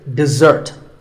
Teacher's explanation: the first syllable is de and the second starts with a z sound. We stress the second syllable, dessert.